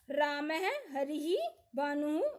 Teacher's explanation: विसर्ग का उच्चारण अर्ध है की तरह होता है।